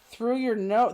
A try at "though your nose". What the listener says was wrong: It's no, though your nose. Everybody's saying no R.